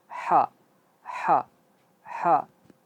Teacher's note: Kalau ha dia keluarnya dari di tengah tenggorokan. Ha. Jelas dia.